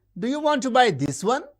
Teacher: the high rise usually associated with questions.